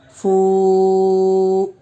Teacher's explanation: واو ساکن سے پہلے فا کے اوپر پیش ہے، واو مدہ ہوگا، اس لیے واو مدہ کو ایک الف کے برابر کھینچ کر پڑھیں گے